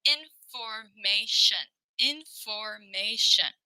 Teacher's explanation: Shun, which is Tion, shun is never stressed. Okay, there's four syllables, but that last one, the Tion, shun, we will not stress it.